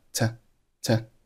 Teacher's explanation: 后面的▁to▁是弱读，读成了▁t▁t